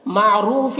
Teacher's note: او میں واولین ہے، او واولین کو بھی جلد پڑھنا ہے۔ معروف، را کو پر پڑھنا ہے، یہاں پر واو مدہ ہے، ایک الف کے برابر کھینچیں گے